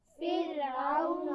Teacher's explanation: را ساکن سے پہلے زیر ہے تو اس کو بالکل باریک پڑھنا ہے، فرعون نہیں پڑھنا بلکہ فرعون پڑھیے۔